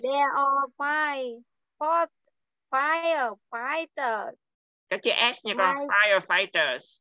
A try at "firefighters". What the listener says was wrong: Các chữ S nha con. Các chữ S. Các chữ sư đằng sau.